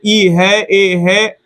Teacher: ये सब आगे के भाग से निकलेगा जीभ के। इसको अभी हम बताएंगे कि जैसे जैसे बोलिएगा तो ये जो जीभ है वो आपका जिसे जीभा कहते हैं वो नीचे की ओर जो होता है, जैसे जैसे शब्द बढ़ेगा नीचे की ओर आएगा।